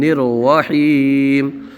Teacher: را کو بھی پر پڑھیں گے